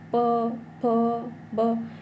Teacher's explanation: प वर्ग जो कि होठ को स्पर्श करती है।